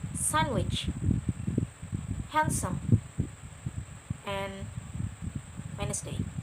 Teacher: I'm not pronouncing D, but I'm just pronouncing it with the consonant N before it.